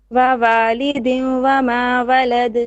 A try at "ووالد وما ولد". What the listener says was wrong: Your wow is no good. Try again.